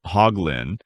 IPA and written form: ˈhɔːɡlɪn (Hoglin)